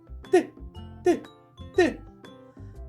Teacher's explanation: відчуваєте як кінчик язика стукає за верхніми зубками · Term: звуку Т